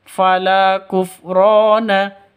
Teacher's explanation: Fala panjang dua ketukan karena ada alif diawali dengan fathah, atau alif sebelumnya ha fathah, mad asli atau mad tabi'i. · Fala panjang, dua ketukan, karena ada alif yang didahului oleh fathah